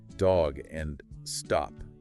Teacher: in American English it's typically that more open sound like the a in father